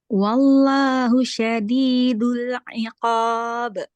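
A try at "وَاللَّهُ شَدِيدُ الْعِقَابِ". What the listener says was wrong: Nah, sama juga. Iqab. Jangan ditambah hamzahnya. Iqab. Emang itu dia kesalahan ini ya, Mbak. Sebenarnya dia itu nggak kesalahan fatal. Cuman karena kita belajar yang benernya langsung gitu. Dia nggak kayak apa ya, iqab.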